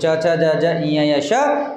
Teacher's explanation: हे जे वर्ण आपण उच्चारण करतो तर आपली जीभ आहे ती त्या तालूला स्पर्श होते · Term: तालव्य वर्ण